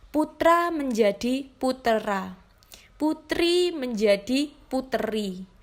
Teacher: Anaptiksis atau suara bakti adalah perubahan bunyi dengan jalan menambahkan bunyi vokal tertentu di antara dua konsonan untuk memperlancar ucapan. Bunyi yang biasa ditambahkan adalah bunyi vokal lemah.